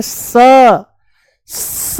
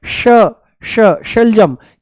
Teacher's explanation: ये है स, दांतों से बोला जाएगा, ये है तालू से श